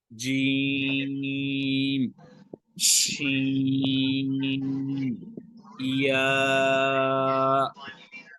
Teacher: ये जुबान का जो दरमियान का हिस्सा है ऊपर वाले तालु से लगाकर इसको पढ़ा जाएगा।